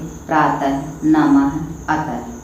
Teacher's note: विसर्ग, इसका उच्चारण आह के रूप में होता है और इसका प्रयोग वर्णों के बाद 2 बिंदुओं के रूप में होता है, जैसे प्रातः, नमः, अतः।